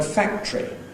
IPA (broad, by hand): ˈfæktri